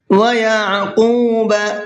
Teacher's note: قاف کو پر کر کے بھی پڑھنا ہے اور کھینچ کر کے بھی پڑھنا ہے